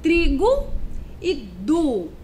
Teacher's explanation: É a letra O. É porque a letra O, quando está no final de uma palavrinha, ela faz o quê? Ela parece com a letrinha U. O som dela parece com a letra U.